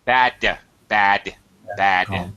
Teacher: I'm not aspirating I'm not finishing the sound bad my tongue is still up in my mouth